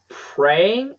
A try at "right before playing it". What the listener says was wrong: get that L one more time